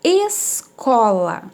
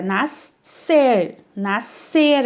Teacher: a gente vai escutar o som apenas do s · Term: dígrafo